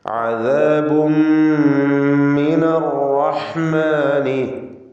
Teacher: അദാബുൻ തൻവീൻ പൂർണ്ണമായും മീമിലേക്ക് ലയിപ്പിച്ച് മണിക്കുക. ഷദ്ദുള്ള മീം ഉച്ചരിക്കുക.